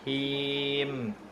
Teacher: Him, dipanjangkan, bibir bawah turun.